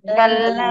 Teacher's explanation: কাল্লা তিন আলিফ টান হবে